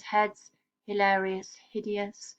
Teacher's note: And you'll note here the voiceless glottal fricative on the H, we've seen in other poems, heads, hilarious, hideous, which gives a kind of breathy, hushing sound.